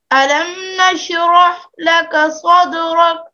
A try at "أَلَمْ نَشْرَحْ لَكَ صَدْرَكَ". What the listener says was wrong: یہ آخر میں کاف ہے اور کاف میں قلقلہ نہیں ہوتا، تو آپ اس کو قلقلہ کے ساتھ مت پڑھیں. ألم نشرح لك صدرك.